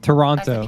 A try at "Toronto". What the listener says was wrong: Toronto. Say it like a Canadian. Toronto. Not Toronto. There's no T in the last part of Toronto. So when you say Toronto, say Toronto. That's how you say